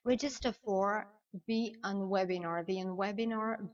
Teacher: imaginez qu'entre the, T-H-E, and webinar, il y a un Y. Et vous faites la liaison très facilement.